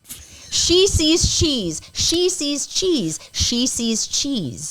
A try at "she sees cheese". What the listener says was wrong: You said she's again.